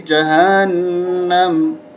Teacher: میم ساکن ہو جائے گا، زبر ختم ہو جائے گی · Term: وقف